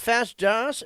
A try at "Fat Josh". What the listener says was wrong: It's kind of sound like you say fast, Josh. I'm not too fast. It's fat.